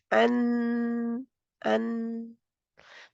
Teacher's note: जहाँ पे मखरज बंद रहेगा। ज़ुबान की नोक जो है ऊपर वाले दाँतों के मसूड़ों से यानी कि गम एरिया से लगी रहेगी, नून जज़्म वाला कहते हुए। तो ये पूरा है मैं कह रही अन इसकी आवाज़ पूरी है।